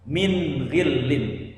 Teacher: bunyi nun sukunnya harus terbaca dengan jelas, tidak disamarkan atau tidak mendengung